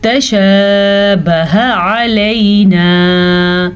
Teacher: ہا کو سینے سے ادا کریں گے. اگر اس کو ہم تھوڑا سا بھی غلط کیا تو یہ ہا بن جائے گی.